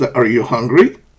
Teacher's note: like yes no questions the intonation Rises